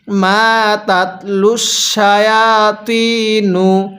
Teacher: মিমের মধ্যে টান দিব, জবরের পরে খালি আলিফ